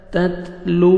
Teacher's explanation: واو مدہ، 1 second ہمیں لام کو کھینچنا ہے